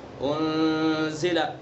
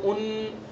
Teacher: نون ساکن کے بعد زا ہے، اخفا ناک کے اندر چھپا کر کے ادا کریں گے